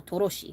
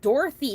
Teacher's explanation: Like, they add the extra O sound in the middle, Toroshi, right? We don't have TH in Korean, so it sounds like a sh sound instead of a th sound.